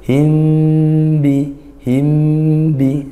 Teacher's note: Berikutnya himbi, nah ini hukumnya ikhfa syafawi, mim sukun bertemu ba, mim sukun bertemu ba dibaca dengung seperti itu. Himbi, himbi, nah dibaca merapatkan bibir ya, itu mungkin ada sebagian yang membaca furja atau setipis kayak keras himbi, nah tapi kita pakai yang diajarkan guru-guru kita.